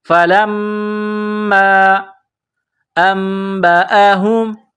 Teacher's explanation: میم مشدد ہے تو یہاں پر آواز ناک میں چھپائیں گے، غنہ کریں گے۔